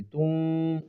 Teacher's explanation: تا واو 2 پیش، تم اس طرح پڑھیں گے، تم، اور آواز کو ناک میں چھپائیں گے